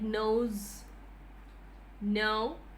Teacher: only difference is that it is a nasal, voiced alveolar nasal